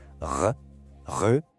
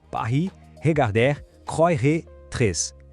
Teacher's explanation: O nosso R do português muitas vezes vem da ponta da língua vibrando. Já o R francês nasce lá no fundo da garganta. Pensa nele como um arranhado bem leve, um som gutural.